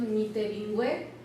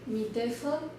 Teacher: esta B que es una bilabial fricativa que se transforma en una F que es sorda, o sea, pierde la sonoridad